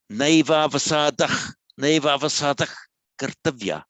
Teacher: So the visarga of the dah kartavya, it's affected by the following k.